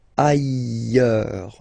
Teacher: final S not pronounced, and then you've got this y sound.